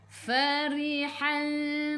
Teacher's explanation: fa fi fu gigi atas menyentuh perut bibir bawah. Farihal, ri senyum, ra baris bawah baca dengan nipis.